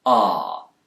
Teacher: british speakers especially those in the south of england will use a more back vowel sound here ah but americans will tend to use a more front vowel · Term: bath vowel